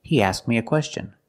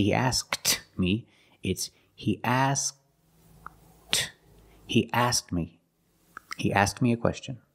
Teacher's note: ask me this happens when the K is between consonants you make the position of the K but you don't release the sound